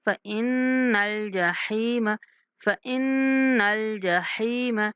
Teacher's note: نون پر غنہ کرتے ہوئے لام کے ساتھ ملانا ہے